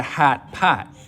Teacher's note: the lot vowel, which normally lives back here, your tongue cupping low down in the back for an open ah sound, moves forwards towards where trap used to be. So in Chicago, it's not a hot pot, it's a hat pat.